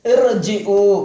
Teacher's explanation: வஸ்லுடைய அலிஃபுக்கு பின்னால் ரா சுகுன் செய்யப்பட்டு வந்தால் அந்த ராவையும் வல்லினமாக உச்சரிக்க வேண்டும்.